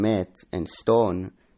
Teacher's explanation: Long A and O as in met and stone raised to become E and O